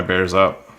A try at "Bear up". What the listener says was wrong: Bear up. You said it plural. He used to put a plural on it.